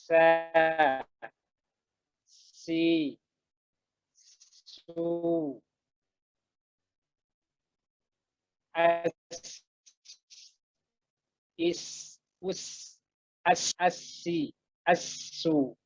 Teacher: kita kalau membaca huruf sin dia pasti mendesis, apalagi kalau disukunkan. Kemudian tidak boleh kita membaca huruf sin seperti terputus gitu suaranya.